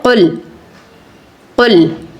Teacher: پیش کی آواز ہے، ہونٹوں کو گول کر کے ادا کیجئے گا